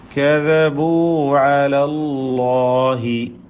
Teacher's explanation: അല്ലാഹ് എന്ന ലഫ്ളുൽ ജലാല ഇതിലെ ലാമിനെയും അതിൻ്റെ ദീർഘാക്ഷരമായ അലിഫിനെയും തടിപ്പിച്ചോദണം